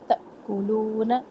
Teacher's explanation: الف کے اوپر ساکن یہ حمزہ بن گیا جھٹکا دے کے پڑھنا ہے